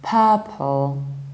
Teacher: You say turn or burn, hence purple, deep purple. If you want to sound more British, you need to skip middle R and prolong the vowel